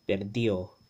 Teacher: Anytime there's that D between two vowels, right, it gets that voiced interdental fricative sound, th. And when it's spoken fast, that th disappears.